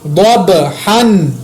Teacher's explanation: ضاد کو موٹا ادا کیا, با پر قلقلہ کیا